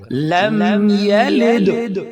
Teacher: لام دال کے ساتھ مل رہا ہے اور دال ساکن ہے تو اب اس پر قلقلہ ہوگا